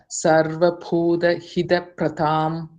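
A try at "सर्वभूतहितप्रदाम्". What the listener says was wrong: Not Buddha, it is Bhuta. Sarva Bhuta Hita Pradham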